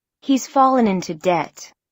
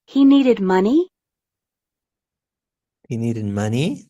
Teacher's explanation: He needed money? That's a question because it has a rising intonation at the end.